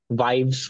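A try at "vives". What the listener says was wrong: वीवेस, वाइब्स नहीं पढ़ना है, फिर इंग्लिश में पढ़ रहे हो, इंग्लिश में नहीं पढ़ना। वीवेस, हाँ। नहीं, S is the last letter.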